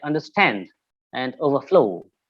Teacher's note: so the stress will be on stand and flow